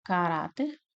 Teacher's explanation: Uma paroxítona, uma vez que a sílaba mais forte é a penúltima.